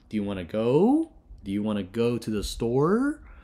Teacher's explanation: notice that your pitch Rises up